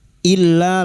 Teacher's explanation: Bertemunya mad dengan hamzah di lain kalimat mad jaiz sama lima harakat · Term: mad jaiz munfasil